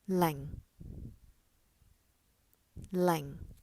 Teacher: it starts from lower than the medium pitch and falls to fairly low pitch